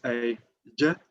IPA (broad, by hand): ɟ